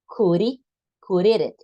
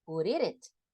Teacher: la D que pronuncio al final, normalmente se me hace una R, porque hay una vocal.